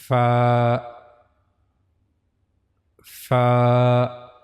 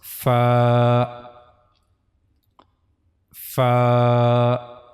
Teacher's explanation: So this is the origin of letter fa. The edges of the top two front teeth will touch the inner side of the lower lip.